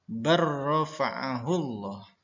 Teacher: Tertulis di dalam Al-Qur'an hurufnya bal rafa'ahullah. Tapi dibaca secara idgham barrafa'ahullah. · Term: idgham mutaqaribain